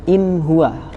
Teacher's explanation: Ketika ada nun mati ketemu ha, maka dia menjadi huruf yang jelas, idhar tanpa mendengung, tanpa gremeng kalau bahasa Jawanya.